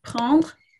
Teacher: I say things like prendre with like quite the guttural pronunciation